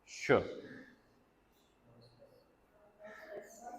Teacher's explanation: श, श जब हम कहते हैं तो आपकी जुबान का जो फ्रंट है, ठीक है, टिप के पीछे वाला हिस्सा, और जो पोस्ट एल्विलर रिज है यहाँ पर आपको जो है फ्रिक्शन फील होगी। Manner of articulation, fricative, oral sound है